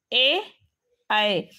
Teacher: ए ऐ कंठ पण आहे टाळू पण आहे ए ऐ म्हणून हा झाला ए आणि ऐ कंठ तालव्य त्यानंतर